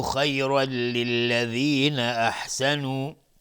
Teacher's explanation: تنوین بعدش لام ادغام بدون غنه میشه